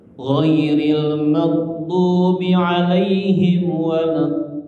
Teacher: panjangnya 6 harokat atau 3 ayunan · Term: mat lazim mutsaqal kalimi